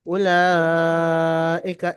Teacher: উলাইকা, এখানে 3 থেকে 4 এলিফ পরিমাণ টান দিয়ে পড়তে হবে। উলাইকা, কাফের নিচে জাবার তাড়াতাড়ি পড়তে হবে, টান দেওয়া নিষেধ। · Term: মাদ্দে মুত্তাসিল